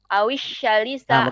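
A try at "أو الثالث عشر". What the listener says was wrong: Ibu salah sa-nya itu. Awis ta. Ujung lidah, Bu. Awis ta. Coba.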